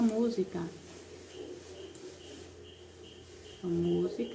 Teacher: ela tem sua antepenúltima sílaba pronunciada com mais força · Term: proparoxítona